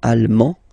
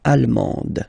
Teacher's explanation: you don't pronounce the final D, but then you pronounce it here for the feminine form